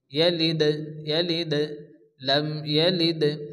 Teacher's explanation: দাল হচ্ছে কলকলার অক্ষর, এই জন্য দালকে এখানে হালকা একটু ঝটকা দিয়ে পড়তে হবে।